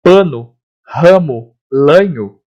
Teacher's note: Nas palavras que eu tenho o A semi-aberto, ou seja, ele não é nem nasal e ele não é nem aberto